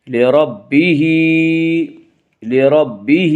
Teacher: لربہ، لربہ، ہا کے نیچے کھڑی زیر ہے، کھڑی زیر قائم مقام ہے یا مدہ کی، اس لیے کھڑی زیر کو ایک الف کے برابر کھینچ کر پڑھیں گے